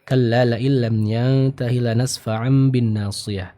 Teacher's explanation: Yang diubah adalah suara dari huruf nun ataupun tanwin menjadi suara dari huruf mim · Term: iqlab